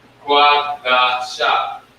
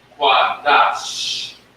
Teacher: By itself, without the connector, it's qua, da, sha. As soon as you put on the connector together, just get the soft SH sound as in cash.